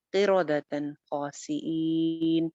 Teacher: تن جو ہے آگے تنوین آ رہی ہے اور اس کے بعد آگے خا آ گیا ہے، خا حروف حلقی میں سے ہے، اسی لیے یہاں پہ ہم غنہ نہیں کریں گے. قیرادتن خاسئین اظہار کریں گے، یعنی نون کو ظاہر کر کے پڑھیں گے.